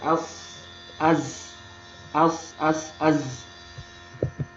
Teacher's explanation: Jadi ujung lidahnya bertemu dengan gigi bawah. Jadi ketika disukunkan, suara desisan, suara tajam itu sangat terdengar.